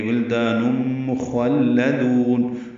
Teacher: ہونے پائے، ولدان دال الف مدہ ہے، دو حرکات لمبا ہے، تنوین کے بعد میم آنے کی وجہ سے ادغام ہوگا، ادغام ناقص ہے، غنہ کریں گے ، ولدان مخلدون، خوا پر پڑھیں گے لیکن لام باریک پڑھیں